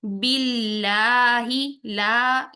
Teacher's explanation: अगर इसमें जलाला से पहले जेर आ जाती है तो हम अल्लाह के लाम को बारीक पढ़ते हैं